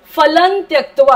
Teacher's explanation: पुढे त आहे म्हणून लच्या वरती जो अनुस्वार आहे त्याचा उच्चार न होणार आहे